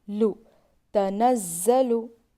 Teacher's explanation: لام، زبان کے کنارے سائڈ کے داڑوں کو لگانے سے لام ادا ہوتا ہے. لام پر پیش ہے، نہیں کھینچیں گے.